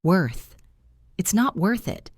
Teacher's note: Listen to the th sound in worth. It is a soft sound.